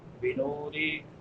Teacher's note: نون کے بعد واو مدہ ہے، واو ساکن ما قبل ضمہ یعنی پیش ہے، تو اس کو ایک الف کے برابر لمبا کریں گے۔ را باریک ہوگی کیونکہ را کے نیچے زیر ہے۔